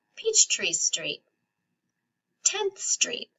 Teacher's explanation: when something has the word street, you don't stress the word street, you stress the first word.